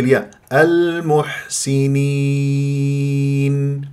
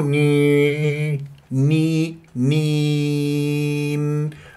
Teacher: المح لا المحسيني سيني كسره السين والنون والياء انحصرت بين نونين لازم انت تخفض الفك السفلي حتى لا يصير غنه في الياء